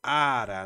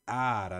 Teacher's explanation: não tem o som forte no final, ele tem um som forte antes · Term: vogal tônica